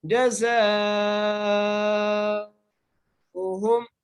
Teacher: خیر البریہ، خیر البریہ۔ آگے جزاؤہم، جیم کے اوپر زبر ہے، زا کے ساتھ الف ہے اور الف کے اوپر مد ہے اس لیے ہم اس کو 5 الف کی مقدار کھینچ کے پڑھیں گے